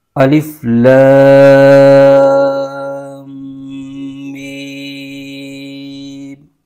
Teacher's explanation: यहां मीम मुद्दत में गुन्ना की आवाज भी बीच में आएगी